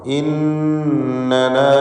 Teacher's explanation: ഇന്നന നൂൻ മുഷദ്ദദയെ മണിക്കണം.